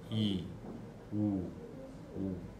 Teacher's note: a língua se desloca né mais profundo então o posterior seria I bem anterior e o u bem posterior